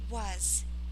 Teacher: Sometimes when S is at the end, it becomes like a very, very subtle Z. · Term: a very subtle Z